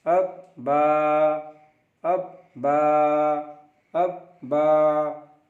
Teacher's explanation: बा दोनों होंठों के तर हिस्से से उच्चारण होता है.